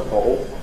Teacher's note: Notice the L vocalization as well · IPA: [ˈbɒʔo]